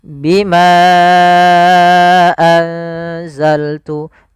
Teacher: untuk mad jaiz munfasil sendiri kita panjangkan empat harakat